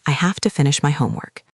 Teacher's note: And have to can sound like hafta.